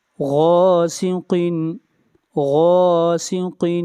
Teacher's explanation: غین کو موٹا پڑھا جائے گا، غین بھی حروف مستعلیہ میں سے ہے۔